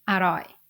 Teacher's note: this whole word is pronounced in low tone